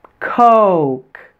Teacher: Did you stretch your O vowel out and glide from the O to the U sound?